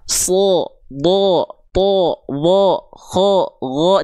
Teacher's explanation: Contohnya huruf gin ketika berharakat fathah terdengar seperti vokal o tandanya tebal dia.